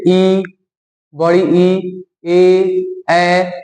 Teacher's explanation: अग्र स्वर जीभ आगे आगे जाता है अगर हम वैसा स्वर जिसको बोलेंगे और जीभ आगे की तरफ